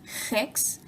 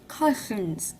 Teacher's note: the air is escaping from the side of her mouth instead of the front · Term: lisp